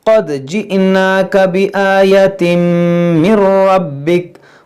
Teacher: रा को मोटा पढ़ेंगे, बा को खूब जमाव के साथ पढ़ेंगे